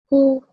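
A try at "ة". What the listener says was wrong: It's not a who. A who wouldn't have 2 dots on top of it. Because it has 2 dots, it is a different letter.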